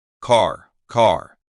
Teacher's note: But in the American accent, the R is clearly pronounced at the end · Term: the r sound, the R sound